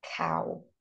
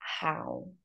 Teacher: o O e o U em inglês, na verdade, vai soar como ow